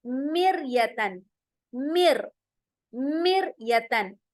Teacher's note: हमारे जो होंठ हैं वो गोल नहीं होंगे, बिल्कुल फ्लैट हो जाएंगे। हमारी जुबान भी जो अंदर है, टंग, वो भी फ्लैट होगी। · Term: बारीक